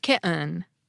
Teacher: The /t/ has been pronounced as a glottal stop for decades, but hearing it with a vowel instead of a syllabic /n/ makes the glottal stop more noticeable. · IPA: ki[ʔɘn]